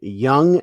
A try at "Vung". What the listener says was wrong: Vung. That's a V. Vung. That's a V.